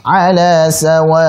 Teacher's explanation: jangan lupa untuk menekan hamzah, ada nabar, ada tekanan di situ apa? Untuk menjaga eksistensi hamzahnya.